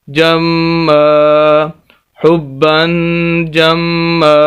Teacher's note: جم الف مدہ بن جائے گا میم کو لمبا کریں گے